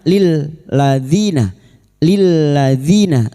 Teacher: Dzi kasar bertemu ya sukun dua harokat mad tabi'i